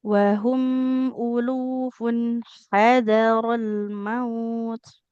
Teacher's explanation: huruf H di tengah tenggorokan